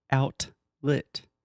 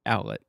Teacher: you want to be very linguistically nerdy a glottal T so you're almost making a T sound your tongue everything is in position to make the T sound and then you just don't quite do it your throat stops you